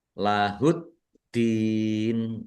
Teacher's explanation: tasdid itu ditekan dan ditahan biar tampak dobelnya